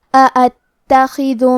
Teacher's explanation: کلمت اتخذ میں حمزہ پہ زبر ہے اور الف پہ بھی زبر ہے، تو ہم یہ دونوں حمزہ کو ظاہر کریں گے. حمزہ کی ادائیگی حلق کے نیچے والے حصے سے ہے. تا پہ تشدید ہے تو ہم 2 حرف کے برابر تا کو پڑھیں گے. · حمزہ کی ادائیگی حلق کے نیچے والے حصے سے ہے. تا پہ تشدید ہے تو ہم 2 حرف کے برابر تا کو پڑھیں گے. خا کی ادائیگی حلق کے اوپر والے حصے سے ہے، کیونکہ خا حروف التفخیم میں سے ہے، تو ہم یہ حرف کو موٹی آواز میں پڑھیں گے.